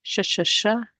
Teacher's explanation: So the middle part of my tongue does not directly touch the roof of the mouth. However, it is raised up and almost indicates that it will touch the roof of the mouth. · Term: letter Sheen